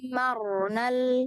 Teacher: Di huruf ro, jadi ketika dia sukun jangan sampai ada kesan dia ada re-nya, re. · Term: ro sukun